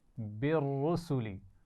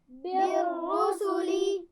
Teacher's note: را کو موٹا پڑھنا ہے، ٹھیک ہے، لیکن اس کے بعد سین کو موٹا نہیں ہونا چاہیے